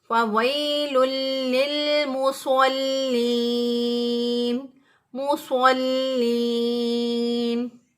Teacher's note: صاد کو موٹا پڑھتے ہوئے ادا کریں گے فَوَيْلٌ لِّلْمُصَلِّينَ مُصَلِّينَ۔ لام جو ہے اس کے اوپر شد ہے،